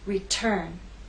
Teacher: Return has two syllables, but it's the second syllable that is stressed. T is at the start of that syllable, so we say return. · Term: stressed syllable